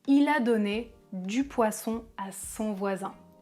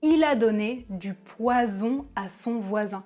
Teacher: Le S est sourd alors que le Z est voisé. Ça signifie qu'on utilise la voix et c'est ça la différence entre ces deux sons. · le S est appelé une consonne fricative alvéolaire sourde, alors que le Z est appelé une consonne fricative alvéolaire voisée